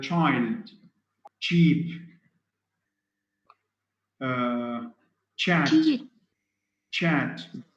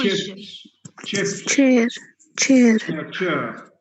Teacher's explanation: So you have a t sound followed by sh, d sound followed by j. Both t and d are alveolar.